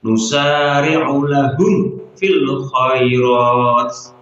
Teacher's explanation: terdapat huruf mim sukun bertemu dengan huruf fa, maka harus dibaca jelas karena ada idhar syafawi